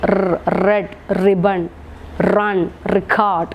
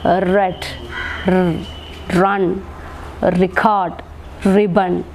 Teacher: The tip of the tongue is held close to the back of the teeth ridge. It is only held close to the passive articulator and there is no contact.